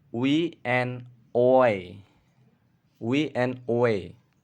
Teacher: voice labial velar glide or voice bilabial velar approximant